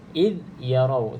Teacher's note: Za mati okey hati-hati jangan diqalqalahkan jangan dilantunkan huruf Zaza sebab Za bukan huruf Qalqalah jadi iid yarau caranya